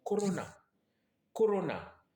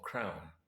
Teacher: En anglais, vous entendez plutôt la diphtongue AU. AU, donc crown.